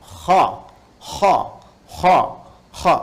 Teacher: bagian pangkal lidah di paling ujung itu menyentuh ke langit-langit. Sehingga ketika dia ke atas, suaranya lebih tebal. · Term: huruf isti'la